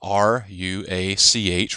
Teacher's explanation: The Hebrew term for that spirit is ruach, R-U-A-C-H, ruach, actually having a more guttural Hebrew sound there at the end